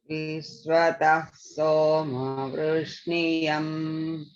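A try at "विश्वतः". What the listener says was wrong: Only thing is the vi in Vishvatas should be down, not middle. Vishvatas.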